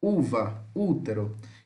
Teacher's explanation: fechado, posterior, oral e arredondado